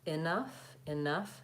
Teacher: you're stretching the nuff and that first syllable is reduced and short